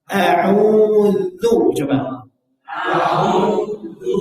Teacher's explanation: Jaga sifat tipis pada huruf dzal pada kata a'udzu